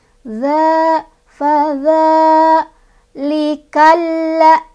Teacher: Fadza di sini ada mad asli atau mad tabi'i, sebabnya karena ada fathah berdiri di atas huruf dzal. Cara bacanya dipanjangkan dua ketukan atau dua harokat.